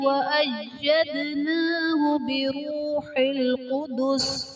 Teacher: أَيَّدْنَاهُ دال حرف قلقلہ ساکن ہے، تو یہاں پر قلقلہ خوب ظاہر کریں گے